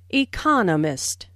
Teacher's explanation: notice the stress on Economist this content word has new information so It is emphasized are four syllables in Economist with the str second syllable Economist · There are 4 syllables in economist, with the stress on the second syllable